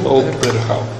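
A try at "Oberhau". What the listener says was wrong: Sí, soamos un P, porque Case, pero non é un P. Non é como B intervocálico español, de acordo?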